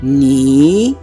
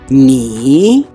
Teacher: At first, the voice will go down, then will go upwards. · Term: third tone